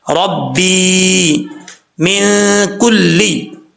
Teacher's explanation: یہاں پہ نون ساکن کا اخفا ہوگا کیونکہ حروف اخفا میں سے حرف کاف آ رہا ہے